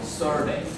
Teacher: So like here the stress is on the first syllable.